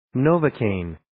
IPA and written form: 'noʊvə,keɪn (Novocaine)